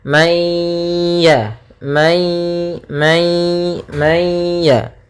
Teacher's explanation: nunnya dimasukkan kepada huruf ya ya Sehingga langsung kepada huruf ya dan ditahan suara ghunahnya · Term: Idgham naqis